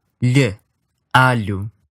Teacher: the sides of your tongue will come down and allow the air to flow in the gap between your tongue and your upper teeth on both sides of your tongue.